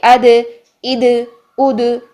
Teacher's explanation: दाल साकिन में आवाज को हिलाएंगे, सांस तो ऑटोमेटिकली बंद होगा, आवाज को हिला देंगे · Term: कलकला